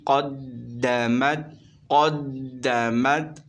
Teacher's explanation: گے، الف سے پہلے زبر آ رہا ہے، الف مدہ ہوگا۔ دال حروف قلقلہ میں سے، یہاں پر قلقلہ مشدد ہوگا، ذرا جم کر پڑھیں گے